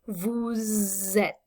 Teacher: the S on the end of vous becomes pronounced when you connect it to a word that begins with a vowel. So et begins with a vowel sound.